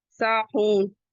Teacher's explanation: سین کے بعد کا الف مدہ ہے ٹو کاؤنٹ پڑھیں گے، واؤ مدہ ہے اسے بھی ٹو کاؤنٹ پڑھیں گے، نون کو ایک سکون دیں گے تو یہ وقف بالاسکان ہو جائے گا